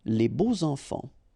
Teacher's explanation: even if you've got this X, well, phonetically it will be like Z, so like if it would be an S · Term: liaison